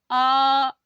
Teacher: तो जैसे आ का उच्चारण करेंगे, आ, तो हमारी जीभ जितनी हो सके उतनी नीचे के लिए आई है। मुंह पूरा खुला और जीभ नीचे के लिए, नीचे वाले तालु में आई है। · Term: नीचा स्वर